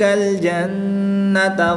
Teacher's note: نون شدد میں بھی غنہ کر کے پڑھیں گے